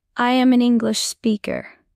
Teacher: Use strong stress on am and English. Say it with power.